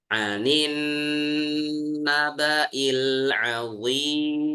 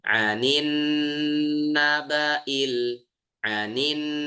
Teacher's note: huruf nun bertasdid ya ditahan lagi